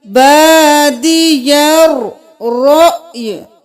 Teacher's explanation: یہاں پہ رو کے ساتھ حمزہ ہے، اس کے اوپر جزم ہے تو ہم جھٹکا دیں گے، پھر ہم یا کو ساکن کر دیں گے، رأی نہیں کریں گے، رأی، یا کی صرف آواز آئے گی، بادی الرأی۔